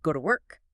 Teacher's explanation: an unstressed preposition like to often shrinks or disappears almost entirely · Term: reduction